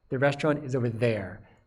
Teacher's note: The restaurant is over there, and there is stressed. You hear the full vowel in the there. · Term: strong form